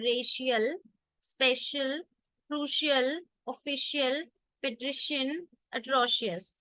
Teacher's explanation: Okay, if you read this rule, when C comes before a Latin suffix containing unstressed I and another vowel, the S sound is distorted to a sh sound, as in the word racial, special, crucial, official, patrician, atrocious.